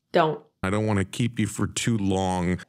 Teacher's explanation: The T in an NT blend, don't, is deleted. Don't. I don't want to keep you for too long. · the T in the NT blend want is deleted